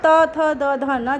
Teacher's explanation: इसी तरह से त, थ, द, ध, न जब इनको बोलते हैं तो सीधे दांत पे हमारी जीभ टकराती है,